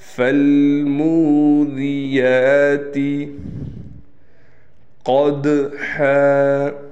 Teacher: قاف باریک نہ پڑھا جائے بلکہ اس کو موٹا پڑھنا ہے